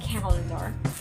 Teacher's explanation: calendar is accented in the first or rather on the first syllable